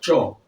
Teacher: जहां से च बोला जाता है च वो तालू है